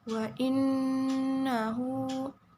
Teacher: inna Who in nah ini ada hukum bacaannya ghunnah musyaddadah karena ada Nun bertasydid dan dibacanya didengungkan